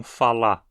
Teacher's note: exemplo de novo em verbos no infinitivo como falar por ex é muito comum praticamente a regra que o r final não seja pronunciado na fala coloquial dizendo-se então falá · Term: Elisão